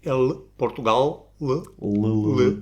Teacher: o som L, que em português é velar, L, Portugal, L, mas que em romeno não existe.